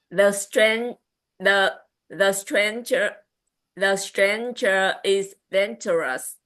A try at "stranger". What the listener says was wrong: Dangerous was good. Stranger, I did not hear the n. Stranger. I heard chú đã nghe stranger, muốn nghe stranger, n, stranger. Chú nghe n, stranger.